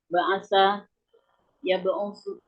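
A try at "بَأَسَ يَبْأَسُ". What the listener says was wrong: Bukan ya. Ya ba'asu bukan ya ba'usu. Huruf halqinya huruf ain. Ba'a. Ba'asa ya ba'asu.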